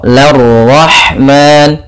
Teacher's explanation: Ro-nya di sini ra tafkhim karena dia berharakat fathah.